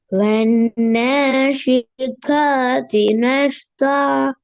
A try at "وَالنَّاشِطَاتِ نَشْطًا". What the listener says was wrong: இதுலன்னா உண்மையில தாளம் கொஞ்சம் பிழைக்குது மற்றபடி கொஞ்சம் லைட்டா வானத்தை நோக்கி வரணும் والناشطات نشطا نشطا